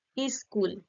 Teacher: একটা স্বরধ্বনি যুক্ত করে স্কুল থেকে হয়ে গেল ইস্কুল